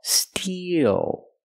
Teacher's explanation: the first word is steel we use the long e plus the dark dark L Steel e like green beans steel then transition